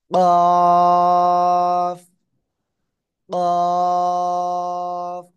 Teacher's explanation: জিহ্বার গোড়া তার বরাবর উপরে তালুর সাথে লাগিয়ে মোটা আওয়াজে উচ্চারণ করব।